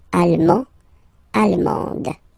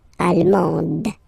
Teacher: you don't pronounce the final D, but then you pronounce it here for the feminine form